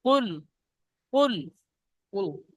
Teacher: কুল বলে একটু গুন্না করছেন, গুন্না হবে না।